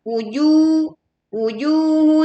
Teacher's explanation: jim tidak memiliki sifat hamas. Maka tahan anginnya dan tahan suaranya.